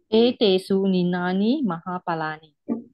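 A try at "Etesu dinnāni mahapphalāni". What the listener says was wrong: Ninani? You mean N? There's D, not N. Dinna, not ninani. Dinna.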